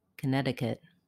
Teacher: syllable connecticut the letter o in connecticut sounds like a connecticut the first letter t in connecticut is a flap it sounds more like a d